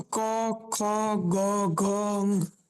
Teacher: કોઈને કોઈ વર્ણ ક્યાંયથી જે ઉચ્ચારણ થાય છે તેમાં, જેમ કે દાખલા તરીકે પેલું આપણે વાત કરીએ કંઠ. કંઠ એટલે આપણું ગળું. એમાંથી જે વર્ણ નીકળે છે એને કંઠ્ય વર્ણ તરીકે ઓળખવામાં આવે છે.